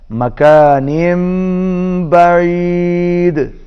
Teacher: जब भी नून तनवीन के बाद बा आएगा तो नून जो है वो मीम के साथ मिल जाएगा।